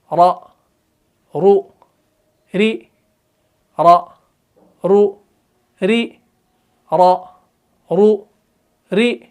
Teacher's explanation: जुबान की जो पुश्त है, पुश्ते लिसान को आपने मुकाबले के तालु से लगाना है तो रा अदा हो जाएगा।